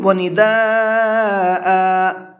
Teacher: ونداء، اب یہاں دیکھیں وقف کس طرح سے کیا میں نے، پڑھا ہے، حمزہ کو ساکن نہیں کیا بلکہ حمزہ کے ساتھ میں نے الف لگا کر کے پڑھا ہے